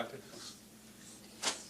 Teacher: But at actually has a glottal stop at the beginning.